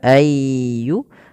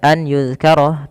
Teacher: cara membacanya memasukkan nunnya kepada huruf setelahnya dan huruf setelahnya menjadi tasydid atau dua huruf maka ayyu kemudian ditahan dengan ghunah sepanjang dua harakat. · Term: idgham